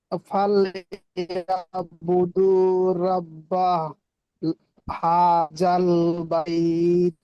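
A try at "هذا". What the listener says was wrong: হ্যাঁ, এটা জাল, জাল একটু হালকা করে হয়। হাজাল বাইত, হাজাল বাইত।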